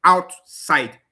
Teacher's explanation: Words that have only two syllables and each of the syllable is having stress. The primary stress is fixed on each of the syllable. · when I want to say out, it's stressed. Side is also stressed. So the primary stress on the two syllables.